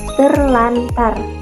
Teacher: belajar Nah satu lagi contohnya ada kata terantar ter plus antar bunyi r dan r pada kata terantar diubah menjadi Bunyi l dan r · Bunyi R dan R pada kata terantar diubah menjadi bunyi L dan R menjadi terlantar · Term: dismilasi